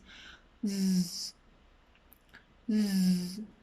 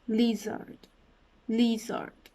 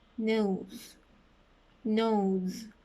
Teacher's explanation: this sound is also an alveolar sound, because the tip of your tongue is touching the alveolar ridge